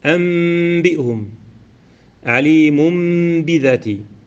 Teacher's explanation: والقلب لغة هو التحويل، والصلاحا جعل الحرف حرفا آخر ويكون عند حرف واحد وهو الباء، فتقلب النون الساكنة والتنوين عند الباء ميما خالصة